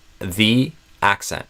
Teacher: The accent starts with a vowel, this ah sound in the first syllable, and so instead of the, I would usually do the.